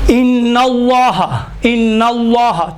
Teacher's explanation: لفظ اللہ سے پہلے اگر زبر اور پیش ہو تو لفظ اللہ کو موٹا پڑھا جاتا ہے